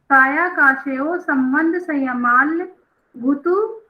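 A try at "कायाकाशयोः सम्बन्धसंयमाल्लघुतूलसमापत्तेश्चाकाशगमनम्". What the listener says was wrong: नहीं, संयमाल लघु, एक आधा ला है, एक पूरा ला है, तो संयमाल लघु। तूल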